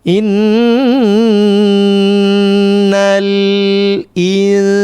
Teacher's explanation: Dibaca samar ikhfa itu tahan dua harakat. Samarnya mengarah ke huruf sin.